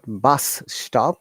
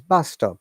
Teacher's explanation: the next word starts the similar or the same consonant sound we bring them together